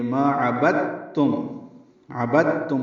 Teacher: دال ساکن کے بعد تا آنے کی وجہ سے ادغام ہوا ہے، اگر یہ تا نہ ہوتا تو دال ساکن پہ قلقلہ ہوتا. · یہ دال اور تا ان کی جنس ایک ہے لیکن حروف جدا جدا ہیں، اس لیے اس ادغام کو کہیں گے ادغام متجانسین. تو اب با کو تا سے ملا دیں گے، دال نہیں پڑھیں گے